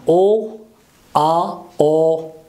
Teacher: Mouth is open, but lips are a bit round, more than as in the sound O.